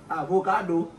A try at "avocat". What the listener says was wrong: non avocat pas l'espagnol